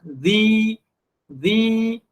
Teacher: Tempat keluar zal adalah di mana? Di hujung lidah kita bertemu dengan hujung gigi depan yang atas.